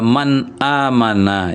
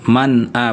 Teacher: Man ini kan nunnya sukun, ada a, ada hamzah, ya. Maka bunyi nun sukun ini jelas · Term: izhar